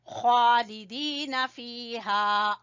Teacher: खा गले के सबसे ऊपर वाले हिस्से से और खा को पुर पढ़ेंगे और खड़ी जबर है इस वजह से खींचेंगे, और दाल को खींचेंगे या मद्दा की वजह से।